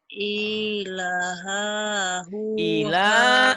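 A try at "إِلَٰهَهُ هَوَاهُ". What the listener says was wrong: lahnya panjang. Ohnya panjang. Hanya pendek.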